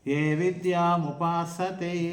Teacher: స అక్కడ దంత్య సకారం